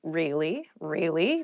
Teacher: you can use it to show you are interested in a conversation with upward intonation